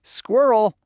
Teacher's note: The American way smushes all that chaos into one syllable.